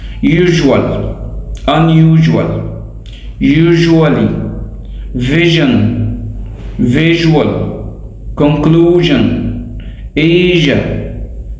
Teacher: The voiced j sound is exactly like the sh, except voicing is added. It means sh is unvoiced, but j is voiced.